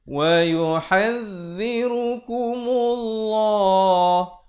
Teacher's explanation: Lafzul jalalah, perkataan Allah datang sebelumnya baris dhammah, dibaca tebal 2 harakat.